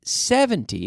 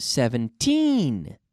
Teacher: with the intonation, the stress on the second syllable, 17. It's not 70, but 17, okay?